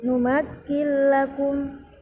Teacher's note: Lalu pada kalimat numakil lakum, yaitu pada huruf nun mati bertemu dengan lam, termasuk hukum bacaan idgham bila gunnah, cara membacanya dengan tidak didengungkan